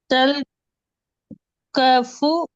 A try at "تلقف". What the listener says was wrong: க இல்ல கோ. க இல்ல கோ.